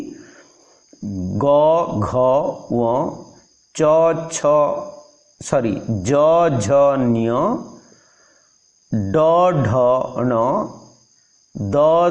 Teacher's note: एगुड़िकर उच्चारण समय रे स्वरतंत्री कंपित होई थाए। तेणु एगुड़ी को सघोष ध्वनि बा भॉयस्ड कुहा जाए।